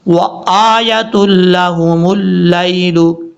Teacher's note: حمزہ کے بعد جو یا ہے اس یا کو لمبا نہیں کریں گے کیونکہ یا کے اوپر کھڑا زبر نہیں ہے، صرف ہم حمزہ کو لمبا کریں گے